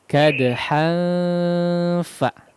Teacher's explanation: jangan di suaranya jangan dimasukkan ke hidung semua ya. Tapi masih ada udara yang lewati al-jauf ya.